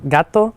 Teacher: la T toma un sonido oclusivo porque hay una pausa de aire y después una explosión de aire que hace el sonido